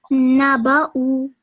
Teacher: I might have prolonged it for 2 seconds. Yeah, so you made the ba a little bit too long. So remember, it's just fatha stroke.